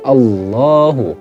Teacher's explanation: Dibaca tafhim sebab diawali oleh harokat fathah.